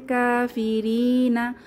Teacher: কাতে এক আলিফ টান হবে, খাড়া জবর আছে,